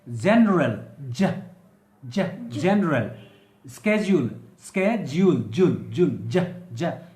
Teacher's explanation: you know the consonant J is a voiced, alveopalatal and affricate consonant